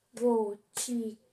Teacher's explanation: A sílaba forte é o ti. O las é a última, o cu é a penúltima e o ti a antepenúltima. Então, gotículas é proparoxítona.